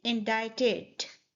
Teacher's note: The D sound in the end is more like a T sound.